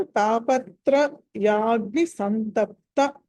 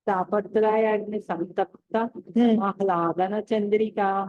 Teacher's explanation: ఇక్కడ తాపత్ర యాగ్ని సంతప్త అనాలి. తా దీర్ఘం వస్తుంది కొంచెం, అది రాకుండా చూడండి.